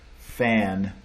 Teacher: there's more of a more of a nasally content to the a before the N which makes sense n is a nasal so it's kind of